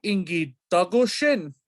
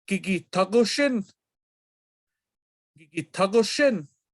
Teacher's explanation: And so consonant vowel change happens sometimes when we add intense markers, changing in this instance the D in Dagoshin to a T